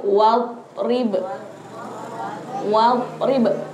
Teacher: Jadi, kalau kita baca wadrib tidak boleh sampai memantul.